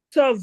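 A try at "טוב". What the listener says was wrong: Non, non, c'est un T qui est là.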